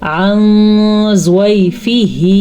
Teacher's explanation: یہاں پہ ہم نے اخفا کا قاعدہ کیا کیونکہ یہ ضاد حروف اخفا میں سے ہے